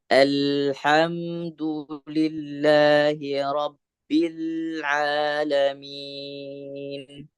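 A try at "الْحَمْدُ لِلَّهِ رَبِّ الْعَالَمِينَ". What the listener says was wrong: Ini di lamnya tadi masih kurang panjang. 2 harokat. Kurang 2 harokat. Alhamdulillahi Rabbil Alamin.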